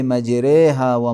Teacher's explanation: فتحہ کی آواز بہت زیادہ کس کی طرف؟ کسرے کی طرف مائل ہوتی ہے، اور الف مدہ کی آواز یا کی طرف مائل ہوتی ہے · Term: امالہ کبریٰ